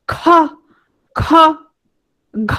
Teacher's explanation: খ ঘ মানে তোমার চাপটা বেশি বাতাসের মধ্যে এজন্য সেগুলো হচ্ছে মহাপ্রাণ